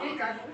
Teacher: প, দুটো ঠোঁট লাগবে। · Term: প বর্গ